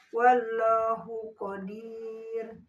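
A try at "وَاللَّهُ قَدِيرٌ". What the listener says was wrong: kurang tebal. Wallahu. Kurang lagi. Wallahu. Bukan wal, tapi waw. Wallahu. Jadi dilipat lidahnya.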